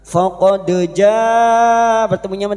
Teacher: Faqad ja bertemunya dengan hamzah dalam satu kalimat ya, mad wajib mutasil bertemunya dengan hamzah dalam satu kalimat mad wajib mutasil 5 harakat kita panjangkan